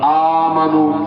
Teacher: اب دو حمزہ جمع ہے، دونوں متحرک، پہلا ساکن پہلا متحرک دوسرا ساکن، تو ہماری روایت میں یہ قاعدہ ہے، یہ واجب ہے کہ دوسرے حمزے ساکن کو ما قبل کے حرکت کے مطابق حرف علت سے بدلنا ہے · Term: ابدال